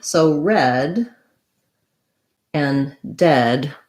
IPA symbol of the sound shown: ɛ